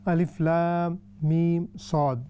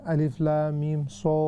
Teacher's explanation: They should be equally stretched, and the Sad is more heavier.